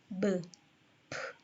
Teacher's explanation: 입술을 사용하느냐, 하지 않느냐에 대해서 이 세 가지 음을 비교해 보면 사운드는 입술 두 개를, 그죠? 붙였다 떼는 소리죠. 파열음이라고 합니다. 브, 프, 그죠? 이 세 가지 다 입술, labial 사운드죠.